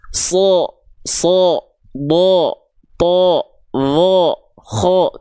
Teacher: ketika huruf shadnya dia berharakat baris atas atau fathah maka teman-teman tidak akan dengar huruf Shad ini dibaca dengan vokal A tapi dia akan terdengar seperti vokal o · yang kita dengar bukan bunyi vokal A tapi condong pada bunyi vokal O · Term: huruf yang tebal